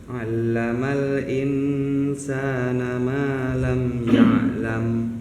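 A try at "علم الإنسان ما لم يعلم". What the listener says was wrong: Agak di ini ya, ditahan. Bukan ditahan sih, ditekan. Allamal, ada tasydid di situ. Setiap bertasydid itu pasti ditekan. Allamal, jadi bukan alamal. Tadi ditahan, ditekan, cuman gak terlalu tertekan, lebih ditekan.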